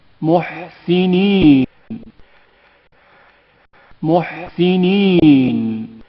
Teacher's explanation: ہا کی آواز حلق کے درمیانی حصے سے گھٹی گھٹی ہوئی سنائی دیتی ہے